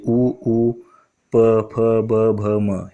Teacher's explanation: आपल्या ओठांचा स्पर्श होतो दोन्ही एकमेकांना हे उच्चारताना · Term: औष्ठे वर्ण